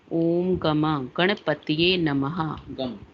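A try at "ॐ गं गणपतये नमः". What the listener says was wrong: हाँ, वहां पर भी वो गम गलत लिख दिया है, तो आप गंग गणपतय कर लीजिए उसे। गंग, गा पे अंक की मात्रा लगाइए, गंग गणपतय।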